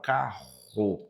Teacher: O carro representa aquele som glotal, carro, RR é dígrafo.